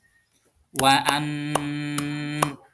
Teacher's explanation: cara membacanya dengan mendengung membacanya menunggu beberapa saat jangan langsung berpindah atau ditahan dua harakat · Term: gunah